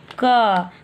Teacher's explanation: लेकिन जैसे ही हम लोग व्यंजन बोलेंगे क, तो क बोलने के लिए क प्लस आ का उच्चारण करना पड़ा